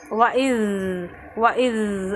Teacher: ये जो ज़ाल है यहाँ पर खलखला नहीं करेंगे